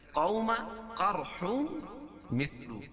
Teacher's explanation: واو ساکن سے پہلے زبر ہے تو واولین ہوگا، اس کو نرم آواز کے ساتھ جلدی ادا کریں گے